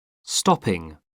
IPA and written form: ˈstɒpɪŋ (stopping)